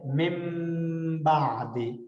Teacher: جس طرح ہم فیمس مثال ہے مم بعد، اب مم پڑھتے ہیں مم ڈبل میم، حالانکہ اصل میں من نون ہوتا ہے، من بعد، من بعد، لیکن ہم مم بعد پڑھ رہے ہوتے ہیں، ڈبل میم پڑھ رہے ہوتے ہیں، نہ کہ بیچ میں نون کو پروناؤنس کر رہے ہوتے ہیں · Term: اقلاب